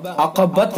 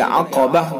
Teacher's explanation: فَلَقْتَحَمَ الْعَقَبَةَ، عقبت نہیں پڑھیں گے بلکہ عقبہ، گول تا کو ہائے ساکنہ سے بدل دیں گے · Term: وقف بالابدال